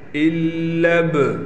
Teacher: لام کو ہم ڈائریکٹ با سے ملائیں گے